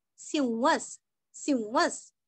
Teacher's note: सिंह और विसर्ग का आधा स